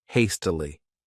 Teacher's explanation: This word has 3 syllables, and the stress is on that first syllable,